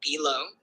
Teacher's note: B is unstressed and low is stressed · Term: I am